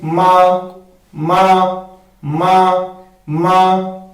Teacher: लेकिन अगर हम मीम के मखरज को सही अदा करेंगे, दो जो होंठ जो है उसके खुशी वाले हिस्से मिलाएंगे आपस में, तो मीम का मखरज सही अदा होगा और इसकी आवाज जो है नाक में नहीं जाएगी